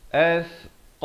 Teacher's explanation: sa di hujung lidah itu keluar di antara 2 gigi, menyentuh 2 gigi depan di atas.